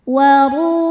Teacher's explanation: huruf ra dibunyikan secara tafkhim karena ra-nya berbaris dhammah, maka dibacanya tebal, pangkal lidah naikkan. · Waru, ru matobi'i zahiri karena waw sukun didahului dhammah, maka huruf ra panjang 2 harokat.